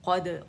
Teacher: قاف موٹا, دال باریک, دال پہ باریک قلقلہ کریں گے